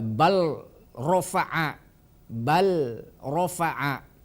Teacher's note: makhroj Anta antara lam dengan ro makanya ketika ada huruf ee lam mati bertemu dengan ro maka huruf lam harus dihilangkan atau harus diidgamkan ke huruf ro